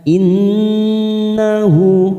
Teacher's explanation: Innahu nun yang bertasdid kita tekan 3 ketuk bacaan gunnah. Innahu, hu ada harokat dhamma yang terbalik pada huruf hal dhamir, namanya mat silah khosiro.